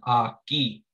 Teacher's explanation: when they end they're going to have a silent kind of sound it's there but it's not voiced